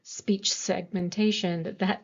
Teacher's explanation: there is more silence in that at the p in speech and at the t in segmentation than there is between the, and even though those are both voiceless, speech segmentation, that all kind of comes together, right?